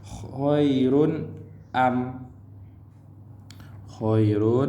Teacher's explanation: Tanwin dua baris di depan bertemu dengan hamzah. Khairun tak dibaca dengan dengung. Sebab apa? Jelas, nyata dan terang. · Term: izhar halki